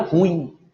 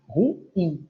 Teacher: Que por um costume de pronúncia errada, por parte de muitos, ela vira ruim. Não, ela é uma oxítona, ruim. A última sílaba é a tônica.